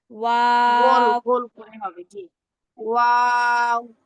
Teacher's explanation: ওয়াও উচ্চারণের সময় মুখটা পুরো গোল থাকবে।